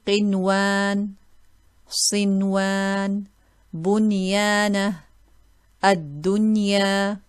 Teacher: there's a noon sakin followed by waw, but we don't read it with idgham. We will read it clearly.